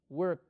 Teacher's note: el verbo work termina en un sonido que es voiceless no lo puedo alargar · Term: voiceless sound